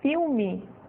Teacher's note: Porque quando eu digo a palavra filme, eu não estou dizendo o som do L como ele é dito em inglês, eu estou dizendo um U